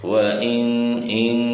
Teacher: Hukumnya adalah ikhfa ya, ini harus disamarkan. Ada dengungannya.